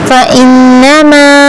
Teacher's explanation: نون پر غنہ آیا ہے فإنما 6 الف کے برابر کھینچیں گے